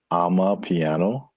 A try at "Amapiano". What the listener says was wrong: Amapiano. One word, Amapiano. Not I'm a piano, but ama. not I'm a piano, it's I'm a piano. Not ama. Ama, and it's her piano.